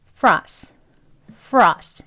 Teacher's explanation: 음절이 두 개 있 지만 앞에 있는 음절을 강하게 합니다